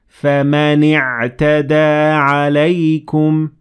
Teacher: اعْبُدُوا رَبَّكُمْ And the second example is the same thing, and I said, فَمَنِ اعْتَدَى عَلَيْكُمْ I connected the noon to the عين